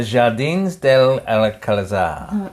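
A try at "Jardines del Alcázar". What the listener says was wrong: Jardines. You don't say J.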